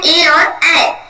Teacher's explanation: कंठ तालु का मतलब है कि गले का भी प्रयोग होगा और तालु का भी प्रयोग होगा इन वर्डों को बोलने में। तो कौन कौन है, ए और ए, कंठ और तालु दोनों का यूज हो रहा है।